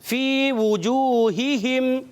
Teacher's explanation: دونوں ہا حلق کے نیچے والے حصے سے. یہ ہا ہیں, ہا سے نہیں بدلنا, دونوں ہا کلیئر رکھنی ہے. · فی یا مدہ کھینچ کر ایک الف ادا کریں گے